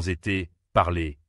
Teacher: c'est un son fermé, plus court et plus aigu.